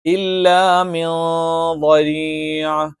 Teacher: ആ നൂനിനെ അവ്യക്തമാക്കി ഉച്ചരിച്ചുകൊണ്ട് എന്ത് ചെയ്യും, ഉച്ചാരണം നടത്തും. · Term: ഇഖ്ഫ